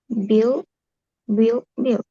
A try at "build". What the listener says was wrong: Iya, bill. Bacanya jangan buil, tapi bill. Bill, bill, bill.